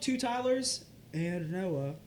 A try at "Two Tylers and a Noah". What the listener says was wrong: It's not just and Noah. It's and a Noah. Two Tylers and a Noah.